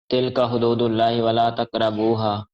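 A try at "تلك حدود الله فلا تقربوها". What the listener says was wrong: وہاں پڑھی ہے نا آپ نے، واو پڑھی ہے، فا نے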